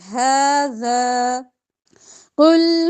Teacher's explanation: قاف موٹا ہوا لمبا نہیں کریں گے